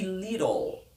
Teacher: Le flap te c'est ce T. C'est cette lettre T qui prend la lettre d'un D assez doux quand il est dans un mot. · Et le L ici en fait prend le rôle d'une voyelle.